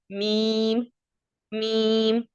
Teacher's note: میم دونوں ہونٹوں کے بیرونی یعنی باہر خشک حصہ، خشکی والا حصہ، اس کو ملانے سے میم ادا ہوتا ہے